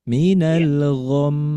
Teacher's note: Maka ketika membacanya ditahan dulu minal gam dua harakat gunah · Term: ghunah musyadah